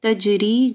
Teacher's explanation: پھر تنوین کے بعد تا ہے تو اخفا غنہ ہوگا. تجری، جیم کے اوپر کلکلہ ہوگا